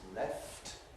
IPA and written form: left (left)